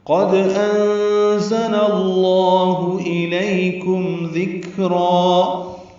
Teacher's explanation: قد انزل اللہ الیکم ذکرا، قاف پر ہے، دال ساکن پہ قلقلہ ہے. انزل میں نون ساکن کے بعد زا آنے کی وجہ سے اخفا ہے، زا تیز صفیر کی آواز سے ادا ہوگا. لام پر زبر ہے، زبر کی وجہ سے لام اسم جلالہ پر پڑھیں گے.